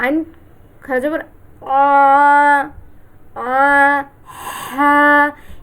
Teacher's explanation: আইনের উচ্চারণও এই হা এর মত হলকের মাঝখান থেকে হবে